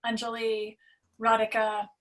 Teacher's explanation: so the a sound is a u like under and then the emphasis is on the first syllable